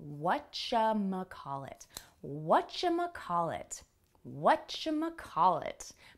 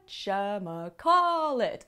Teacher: Put the stress on the first syllable, whatchamacallit, and the second to last syllable.